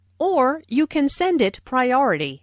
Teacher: Notice the stress on or, which emphasizes that there is another possibility.